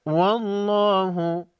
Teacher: لفظ اللہ سے پہلے والے حرف واو پر زبر ہے، لفظ اللہ کے لام کو موٹا پڑھیں گے